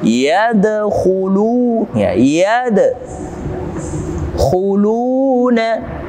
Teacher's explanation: dal yang mati berada pada tengah-tengah dan berada pada awal kalimat atau ayat, maka hukum tajwidnya adalah qalqalah sughra, kecil, pantulannya cukup yang ringan. Yadkhulu, ya yad khuluna, ada dhammah bertemu dengan waw sukun, kita baca dua harokat karena hukum tajwidnya adalah mad tabi'i.